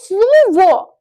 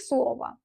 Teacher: O saiti vurğusuz olduğu zaman tələffüzdə a səsini verir.